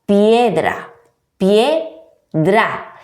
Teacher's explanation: Cuando ocurre esto, cuando encontramos un diptongo, es decir, repetimos, la unión de dos vocales en una misma sílaba, esa sílaba está formada por dos vocales, por lo tanto tenemos que pronunciarlas en el mismo golpe de voz, en la misma sílaba.